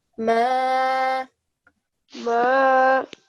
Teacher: And whenever we have a blank alif occur, then we make sure that we prolong the letter for a good 2 seconds